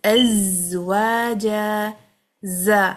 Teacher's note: ز اس کو ہلکا نہ کریں، پورا بز لے کے آئیں